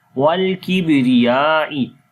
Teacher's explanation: on the ba we make qalqala, the weak qalqala. Ra we read in light sound.